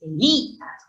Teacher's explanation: es Elías, con acento en la vocal cerrada. Eso es un hiato acentual, por ejemplo.